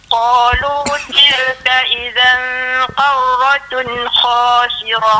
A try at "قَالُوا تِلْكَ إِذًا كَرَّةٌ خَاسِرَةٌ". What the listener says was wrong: Baik, huruf kaf jangan terlalu dalam ya. Karratun gitu.